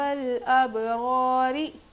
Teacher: رو پر زیر ہے تو رو باریک ہوگی